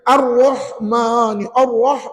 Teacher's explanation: tebal tapi tak perlu muncung bibir